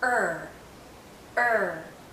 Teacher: not touching the back of our bottom front teeth for a the tip of our tongue is actually curled backward and as it comes back the central part of her tongue